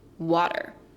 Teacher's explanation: You pronounce the A very clearly in front of the T, but then you swallow the E. Water. It's almost like it goes straight from a T to the R. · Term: alveolar flap